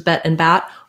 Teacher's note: both the eh and the ah vowels are front vowels, which means the resonance is happening near the front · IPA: /ɛ/ and /æ/